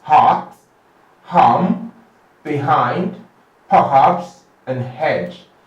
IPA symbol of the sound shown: h